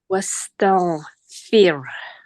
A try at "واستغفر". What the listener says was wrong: No, not fear. Don't say the ra heavy. Fear.